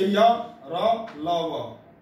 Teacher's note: जिन वर्णों के उच्चारण में सांस को रोकने की आवश्यकता नहीं होती वे अंतस्थ व्यंजन के अंतर्गत आते हैं